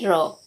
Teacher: जिह्वा का अग्रभाग मसूड़ी के पास 2-3 बार हिलने से लुंठित ध्वनि उच्चारित होते हैं।